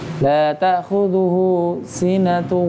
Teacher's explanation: Hu itu panjang 2 harkat.